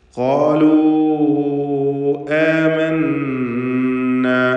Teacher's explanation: വാവിനെ 4-5 ഹറക്കത്തിൻ്റെ അളവിൽ ദീർഘിപ്പിക്കണം. ശേഷം ഹംസ അടുത്ത പദത്തിൽ വന്നതാണ് ഈ ദീർഘത്തിനുള്ള കാരണം. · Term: മദ്ദ് മുൻഫസിൽ ജായിസ്